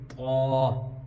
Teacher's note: دوسرا ڈیفرنس یہ ہے، یہ تا باریک ہے، یہ طا، منہ بھر کی آواز آئے گی